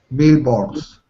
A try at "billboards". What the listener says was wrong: Careful with the L's here. Billboards. Bill. There's no L. Bill. It's like bill. Imagine it's a W or a U. B-I-W. Bill. Billboards. So we don't say the L. We don't say billboards. Only if you speak really slowly. If you speak quickly, bill. Bill. It's almost like biu. It's almost like ew. Like that.